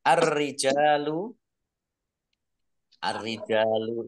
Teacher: ee Alif lamnya ya tidak dibaca langsung masuk ke huruf ro alif lam syamsiah ditandai dengan rnya dibaca dobel ada tasdidnya · Alif lamnya ya tidak dibaca langsung masuk ke huruf ro alif lam syamsiah ditandai dengan rnya dibaca dobel ada tasdidnya Jim